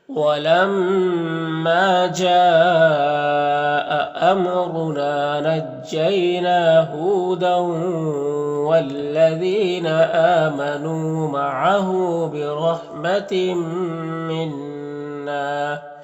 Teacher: تنوین کے بعد میم حروف یومن میں سے تو ادغام ناقص ہوگا، نون مشدد غنہ ہوگا، اور الف مدہ ہے، ایک الف کے برابر کھینچیں گے، اس طرح سے وَلَمَّا جَاءَ أَمْرُنَا نَجَّيْنَا هُودًا وَالَّذِينَ آمَنُوا مَعَهُ بِرَحْمَةٍ مِّنَّا ونجیناہم، یہاں پر یالین سے نرم آواز کے ساتھ جلد پڑھیں گے.